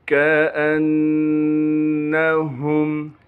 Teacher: हमज़ा को बग़ैर झटके के बग़ैर खींचे पढ़ेंगे। हमज़ा को नून से मिलाएंगे।